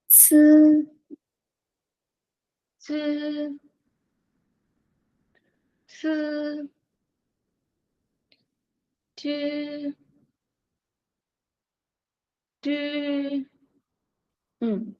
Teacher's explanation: âm này nhá thì mình sẽ để giống như chữ Z này nhưng mà mình sẽ bật hơi ra